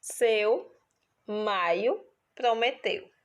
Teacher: ditongo decrescente, composto de vogal e semivogal nesta ordem. Ou seja, a semivogal ela vem depois porque ela está decrescendo.